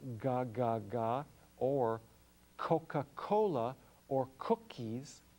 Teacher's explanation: it's that soft palate acting like a flutter valve going up against the back of the throat